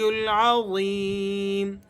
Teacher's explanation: ضا کے بعد یا ہے تو یا مدہ ہے، آپ نے اسے کھینچ کر پڑھنا ہے